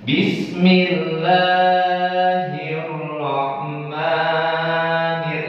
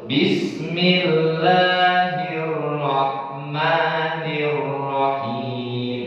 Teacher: Mad Asli atau Mad Thobi'i dibaca Hanya dua harokat kagak boleh lebih dari dua arokah